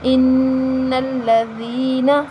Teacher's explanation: یہاں یا مدہ ہے، یا ساکن سے پہلے زیر آ رہی ہے تو یا مدہ، ہم اس کو ایک الف کے برابر لمبا کریں گے اور حرکت کو لمبا نہیں کریں گے، ان الذین، ٹھیک ہے۔